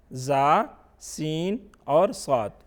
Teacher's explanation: حروف صفیریہ زا، سین اور صاد پر مشتمل ہے، زبان کی نوک اور دونوں دانتوں کے اندرونی کنارے سے ادا ہوتے ہیں